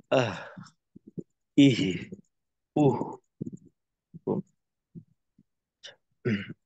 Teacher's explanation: কারণ হইলো কি, যে এখানে মাখরাজ থেকে পৃথক হয়ে গেলে, বা যেহেতু মাখরাজের কাছাকাছি থেকে একটা হরফের যখন আওয়াজ চালু রাখতে হয়, তখন মাখরাজের কাছাকাছি থাকতে হয়, এমন ভাবে যেন পরিপূর্ণভাবে মাখরাজটা মিলিত হয়ে না যায়। তো হায়ের ক্ষেত্রে যে বেশি জোরালো করা যায় না, তবে যেন একেবারে বাদ পড়ে না যায় আওয়াজটা। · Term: হায়ের আওয়াজটা